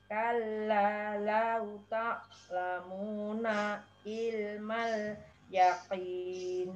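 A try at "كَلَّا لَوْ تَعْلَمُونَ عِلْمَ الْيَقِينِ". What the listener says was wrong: Ya, mending agak jeda begitu timbang nyeret ya. Lau ta'lamuna. Satu ketuk ilmal gitu. Timbang ta'lamuna il.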